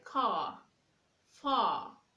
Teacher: when you have the letter R at the end of words in British English, the sound of letter R is not heard. You don't pronounce the letter R.